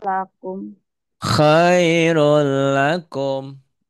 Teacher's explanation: bunyi N-nya hilang jadi L